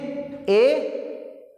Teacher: आपका मुंह आधा बंद होना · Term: अर्ध समृद्ध